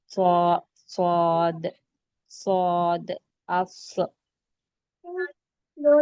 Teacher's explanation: صاد کو موٹا پڑھیں گے، اتنا موٹا کہ جو گال ہے تھوڑے سے گال کو پھلا کر پڑھیں گے،